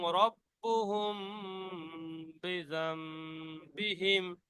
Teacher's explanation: মিম সাকিন গুণনা হবে কারণ বা এসে গিয়েছে